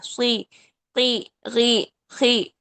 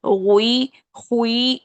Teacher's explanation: حروف مستعلیہ جب کسرہ کی حالت میں ہو تو سب سے لاسٹ درجے کی تفخیم ہوتی ہے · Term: چوتھے درجے کی تفخیم